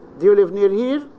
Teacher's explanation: so the word here at the end is of medium pitch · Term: low rise